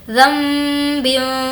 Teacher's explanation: ज़ाल को हम इस मीम के साथ मिलाएंगे। ज़ाल मीम ज़बर ज़म और गुन्ना भी करेंगे ज़ंबिन। यहाँ पर तनवीन की जो आवाज़ है हम उसको नाक में छुपा रहे हैं क्योंकि यहाँ पर हुर्फ इख्फा का क़ायदा है। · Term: इख़लाब का क़ायदा